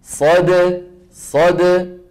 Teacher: الدال ايه شديده شديده شديده ساكنه زمنها قصير